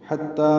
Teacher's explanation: حتی میں حا وسط حلق سے ادا کریں گے